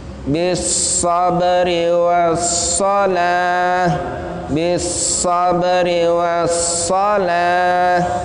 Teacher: sa itu harus tebal, lebih tebal daripada sin